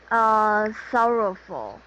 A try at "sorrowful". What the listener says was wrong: Very good.